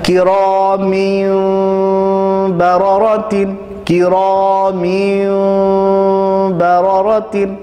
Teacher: پڑھنا میم ہی ہے, نون نہیں پڑھنا, چونکہ یہ اقلاب کا رول ہے.